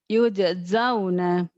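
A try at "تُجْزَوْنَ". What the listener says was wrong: Salah. Yud. Mana yud? Tujzauna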